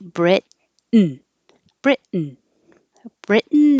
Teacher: Britain is a syllabic N. The N becomes its own syllable. And so instead of Britain, when you go up for the T, Brit, hold it there, and then go N.